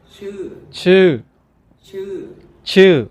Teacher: The intonation for this word is high and then slightly dropping.